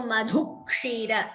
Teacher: So, dvitvam before kshi. So, madhukshira. Extra ka is being heard.